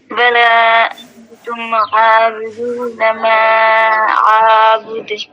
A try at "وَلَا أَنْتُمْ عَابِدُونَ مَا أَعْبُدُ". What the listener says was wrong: ہاں لیکن اتنا زیادہ نہ کھینچیں، اعبد نہیں، ماں کو کھینچیں کیونکہ ماں پہ مد ہے، ٹھیک ہے، لیکن آ کو نہ کھینچیں، ولا اعبد. ہاں تو ابھی جو ہم نے لام کے بارے میں سمجھایا تھا کہ کلے نہیں کہیں گے، کل کہیں گے، وہی غلطی آپ نے انتم میں کی.